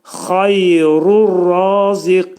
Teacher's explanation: Demək, burada qin dedikdə qaf hərfinin məxrəci dilin sonu və dilçəyin başlanğıcıdır.